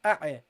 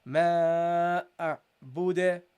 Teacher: make sure that you don't give a qalqala on the ayn